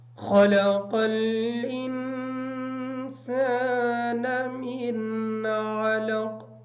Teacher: خا کو موٹا پڑھیں گے، قاف کو موٹا پڑھیں گے، انسان کا غنہ جو ہے یہ مکمل کریں گے. من کا غنہ یہاں پہ نہیں ہوگا اس وجہ سے کہ اس نون کے بعد حروف حلقی میں سے عین آ گیا ہے